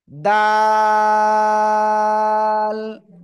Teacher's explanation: জিহ্বার আগা উপরের দুই দাঁতের গোড়ায় লাগান, লাগিয়ে তিন আলিফ টেনে উচ্চারণ করতে হবে